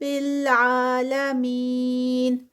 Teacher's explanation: یا مدہ اور 4 کاؤنٹس کا اسٹریچ اسٹاپ پہ